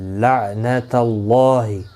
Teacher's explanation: یہ لام سائلنٹ رہے گا، عین اس لام کے ساتھ ملے گا، کیونکہ لام ساکن کے بعد مشدد لام آیا ہے، اس لیے عین سیدھا اس لام کے ساتھ ملے گا.